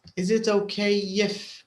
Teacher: there's another link between the K and the I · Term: y sound